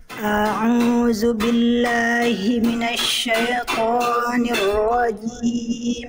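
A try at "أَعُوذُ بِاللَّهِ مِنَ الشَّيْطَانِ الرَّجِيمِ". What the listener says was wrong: Oke, to-nya kepanjangan. 2 harokat Bunda.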